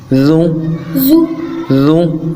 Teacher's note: ذال کو نرمی سے ادا کرنا ہے، زبان کا سرا دانتوں کے سرے کے ساتھ